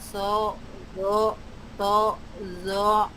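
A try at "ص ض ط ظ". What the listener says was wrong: Nah, ini 4 masih nanggung tebalnya. So, do, to, zo. Ainnya juga masih masuk ke hidung. A-nya masih ke hidung. Ini kalau ditutup hidungnya, itu kerasa di hidung tuh. Terasa di hidung. Dia bukan dipegang, dikeluarkan dari situ.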